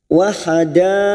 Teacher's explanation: ada mat yang bertemu dengan hamzah dalam satu kalimat, mat wajib mutasil. Kita samakan dengan tadi, 5 harokat kita panjangkan.